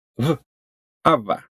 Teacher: It's made by bringing both of your lips close together, but instead of closing them completely to form a B, aba, you let a little bit of air through it and make v, ava.